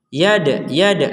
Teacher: Dal sukun ini kita baca dengan pantulan yad. Nah, ini menarik lagi ini bergabung lagi ini.